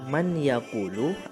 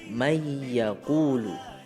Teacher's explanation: idgham artinya memasukkan jadi Nun tidak perlu dibaca